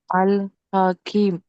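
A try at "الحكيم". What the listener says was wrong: ఇక్కడ యామద్ ఉంది కదా, దీర్ఘం తీసి చదవాలి.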